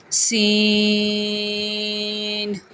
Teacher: سین میں سیٹی کی آواز آئے گی